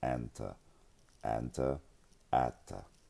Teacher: because, again, of the assimilation of the noon, the tau will experience gemination